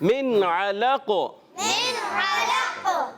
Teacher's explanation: نون ساکن کے بعد عین آیا تو ہم نے یہاں غنہ نہیں کیا